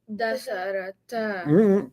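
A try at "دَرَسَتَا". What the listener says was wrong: Keep the letters in order. Darasa. Darasa, both of them studied.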